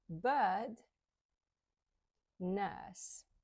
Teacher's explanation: we remove the r when it comes at the end of the word or in the middle of the word and it has a vowel before it all right before the are there's a vowel and not after